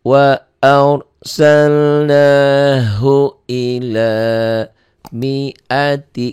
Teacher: Mi'nya pendek, nggak pasangan. Ro-nya tebal karena sebelum ro mati baris di atas.